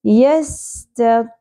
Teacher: سین سیٹی کے ساتھ تا باریک ہوگا, زبر زیادہ نہیں کھینچی جائے گی, تو پر ہوگا.